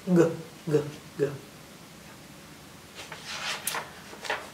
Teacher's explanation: And G, G, G is his hard sound. The hard sound is in the back of your throat.